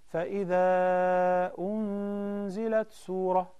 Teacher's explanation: that's ghunnah again okay because of the إخفاء